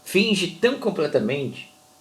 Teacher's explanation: Essa última sílaba fraca a gente quase não fala. · Olha só como é baixinho esse T.